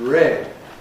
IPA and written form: ɹed (red)